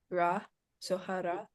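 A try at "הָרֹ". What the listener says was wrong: No, not ra. Haro.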